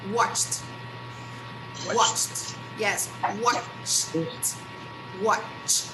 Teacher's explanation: We go from ch to t. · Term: T sound